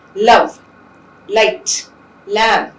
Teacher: air would escape through the sides, and the lateral sound is produced